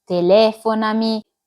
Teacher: Bisdrucciole, quando l'accento cade sulla quartultima sillaba della parola